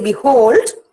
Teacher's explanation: when I say behold, force is given to the hold part. The word, the syllable hold.